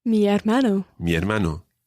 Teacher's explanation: Although it starts with an H, you don't pronounce the H. The H is always, always silent in Spanish.